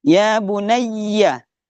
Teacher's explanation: Madbi'i ya bunayya. Kalau ia bertasydid itu ditekan penyebutannya, penyebutannya double